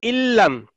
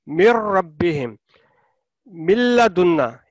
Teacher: इल्लम नून की आवाज बिल्कुल नहीं है, लाम है मुशद्दद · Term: इदगाम करना है बगैर गुन्ना